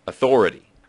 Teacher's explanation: But as usual, the specific vowel sounds aren't as important as the stress. If you keep the stress on the second syllable, you should be okay.